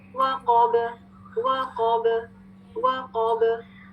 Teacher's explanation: पे जब हम वक्त करेंगे और वो कलकला लेटर होगा तो लास्ट लेटर को साकिन करेंगे, आवाज बाउंस बैक करेगी, पलटेगी · वाव को बारीक रखिए, बा को बारीक रखिए, सिर्फ कॉफ मुफख्खम